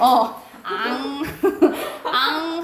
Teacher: 여러분이 코를 잡고 앙 하면은 울릴 거예요. 앙 하면은 코가 울려요. 코가 울려요. 이게 비음이야.